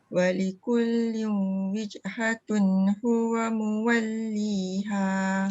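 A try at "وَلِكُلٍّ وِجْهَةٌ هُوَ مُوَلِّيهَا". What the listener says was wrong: Cuba eratkan sikit jim. Walikullin jangan jangan bunyi lah, dia macam ketat. Wijhatun. Dua harakat. Walikullin dua harakat.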